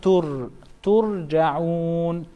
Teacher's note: We have dhamma right before ra sakina. So this ra sakina will be pronounced in a full mouth. Tur, not tur, but tur.